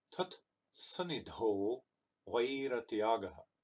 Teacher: You notice they say o and not ow, and they say way and not why, because these letters in context are always sound like their equivalent pair.